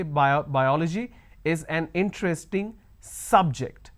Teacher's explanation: I am stressing on the first syllable